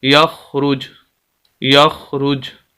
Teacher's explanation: وقف کرنا چاہیں تو جیم کو ساکن کریں گے، جیسے ہی ساکن کریں گے پیش ختم ہو جائے گی، تو وقف کی حالت میں ہم اس کو پڑھیں گے یخرج، یخرج۔